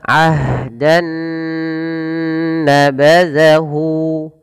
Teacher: sini awalnya bunyi n ketemu dengan n yang selanjutnya Nun maka caranya masukkan Nun yang pertama kepada Nun yang kedua maka di idgamkan maka dinamakan dengan Idgham bunah nah kemudian ditahan dengan gunah maka